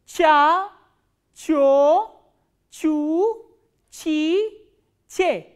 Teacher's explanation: So, what happens is middle part of your tongue goes up and this sound is pronounced ch.